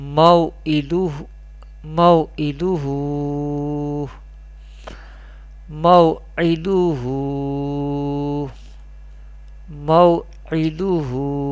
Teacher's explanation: Here zabar before waw sakin, this is wawleen, and this is vertical harkat, ulta pesh or reverse pesh. Vertical wawleen we pronounce without stretching, and vertical pesh or ulta pesh, reverse pesh we pronounce up to by stretching up to one alif or two harakat.